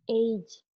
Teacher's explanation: Ada diftong EI ditambah J